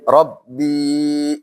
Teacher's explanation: ketika B-nya panjang itu nggak boleh ada gunnah juga ya. Rabbi, kadang karena dia panjang itu kan akhirnya hidungnya mendengung ya.